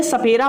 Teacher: सपेरा वाला सा जो होता है, ये कौन सा उच्चारण स्थान होता है? तो इसका उच्चारण स्थान दंत होता है, यानी दांत से होता है।